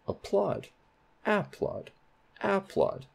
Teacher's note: So that plod has primary stress.